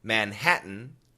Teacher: typical American pronunciation Manhattan it's a glottal stop